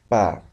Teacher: Al emitir este sonido, básicamente juntamos los dos labios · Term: bilabiales